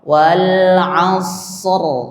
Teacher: Wal asr ya itu ro dibaca tebal karena ra yang disukunkan dia tergantung pada ra yang disukunkan diawali oleh huruf sukun selain wau dan ya.